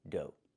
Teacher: Make the long O like no and go, and the GH is silent.